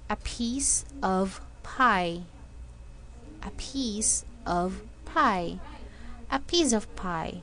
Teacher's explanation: did you feel the strong puff of air when you were producing the sound of P